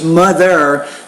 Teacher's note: that's a voiced interdental consonant, which means when you produce the sound, you need to put your tongue through your lips and then create a vibration